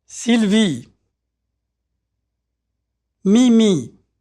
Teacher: Notice how tight the sound E is. There's no diphthong, which is to say that the vowel sound doesn't change.